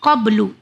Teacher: جس طرح سے دال کا ساؤنڈ تکرار سے واپس آتا ہے اسی طرح سے با بھی جب ہم پڑھیں گے اور با پہ جزم آ جائے تو با کا بھی ساؤنڈ ریٹرن آتا ہے, یعنی تکرار ہوتی ہے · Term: کلکلا